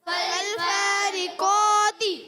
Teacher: قاف پر کھڑا زبر بھی ہے، ایک الف کھینچنا بھی ہے، مگر قاف حرف مستعلیہ میں سے ہے، قاف حرف مستعلیہ میں سے موٹا پڑھیں گے، فا کو تو موٹا نہیں پڑھیں گے مگر قاف کو موٹا پڑھیں گے · حرف مستعلیہ میں سے۔ اچھا اب اس کے قاف کا جو الف ہے نا یہ بھی موٹا ہو جائے گا، یعنی فالفارقا مسلسل موٹا رہے گا